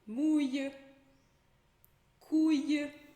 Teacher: A gente pronuncia esse L como se fosse um I curtinho. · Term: L com som de I